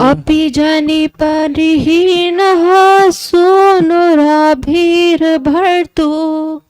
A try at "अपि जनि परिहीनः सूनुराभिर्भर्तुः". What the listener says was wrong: भर्तुर उसका रॉ भी लगा दीजिए, खाली आधा सा, आधा हल्का सा रा लगा दीजिएगा। अपि जनि परिहीनः सूनुराभिर्भर्तुर्। अपि जनि परिहीनः सूनुराभिर्भर्तुर्।